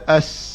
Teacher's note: Dia sofir ni adalah berdesir yang ada sekali dengan nafas.